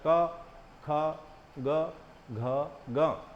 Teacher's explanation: इनको कंठ व्यंजन बोला जाता है क्योंकि इनको बोलने के लिए जो है कंठ का इस्तेमाल होता है। तो जीभ कहीं और टच नहीं होती है और कंठ से इनका उच्चारण होता है